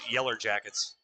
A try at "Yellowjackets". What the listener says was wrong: Yeller. It sounded like Yeller.